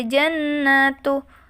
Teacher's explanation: Nunnya wajib dibaca mendengung karena di sini ada nun fathah bertasydid.